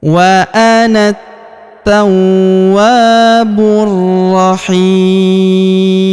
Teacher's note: Dan huruf pemberhentian huruf mu kita sukunkan atau kita matikan.